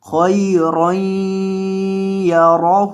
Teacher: خو کو اور را کو دونوں کو موٹا کرنا ہے، اس را کو بھی موٹا کرنا ہے. را کے اوپر جب بھی زبر ہو قاعدہ سن لیں، اس کو موٹا کر کے پڑھا جاتا ہے، اور خو کو بھی موٹا کریں گے اور یہاں گننا کر کے پڑھیں گے.